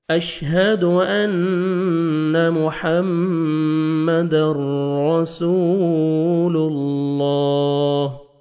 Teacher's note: اللہ سبحانہ و تعالیٰ کے نام سے پہلے پیش آ رہے ہیں، لام کو آپ نے موٹا کر کے پڑھنا ہے